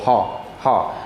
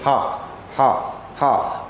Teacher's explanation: जब भी हम हा बोल रहे हैं तो हमारी जीवा पीछे की तरफ नीचे की ओर हल्का सा खिसकती है